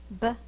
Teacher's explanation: the first sound is my lips are closed